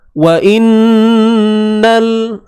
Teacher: nun bersabdu dengung kadar 2 harakat, wajibul ghunnah.